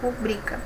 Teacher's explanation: Ela não é acentuada porque a sílaba tônica é a penúltima